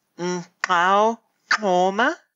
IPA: Nǃxau ǂToma